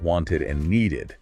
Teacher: When the base verb ends in a T or a D sound, like want or need, then the ed is pronounced as ed